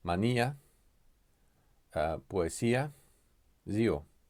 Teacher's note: pronouncing each vowel as part of a separate syllable. These are when either U or I is not present. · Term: hiatus